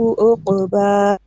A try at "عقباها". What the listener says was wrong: The last ain is not clear. You're saying more like a hamza. Once again, عقباها.